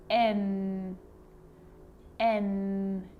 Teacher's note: So my tongue is lifting to the roof of my mouth, behind my teeth.